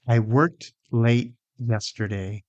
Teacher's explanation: Notice that there's no extra vowel in work.